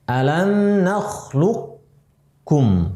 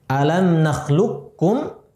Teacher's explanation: si qafnya sudah tidak dibaca, dimasukkan ke huruf kaf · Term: idgham kamil